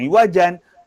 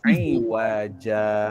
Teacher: Baris 2 di atas dibaca dengan wakaf. Bila baca dengan wakaf, dia tak jadi dah yang iwajan, tapi dia telah iwadkan, digantikan dengan bacaan 2 harakat iaitu iwaja.